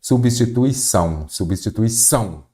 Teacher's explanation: então a sílaba tônica é a última